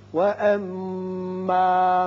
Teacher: میم مشدد ہے، غنہ کریں گے